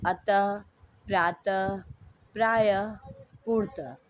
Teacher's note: इसका उच्चारण आधे ह के आवाज के समान होता है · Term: विसर्ग